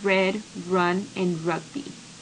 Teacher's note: An important aspect of the American R sound is that the tip of the tongue never touched the tooth ridge during the sound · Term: alveolar approximant R